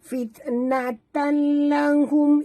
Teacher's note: Tanwin baris dua atas bertemu dengan lam. Ya, maka kita kena masukkan ke dalam lam tapi tak boleh dengung ya. Fitnatallahum idgham bila gunah.